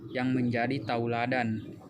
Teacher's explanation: vokal e menjadi bunyi au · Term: diftongisasi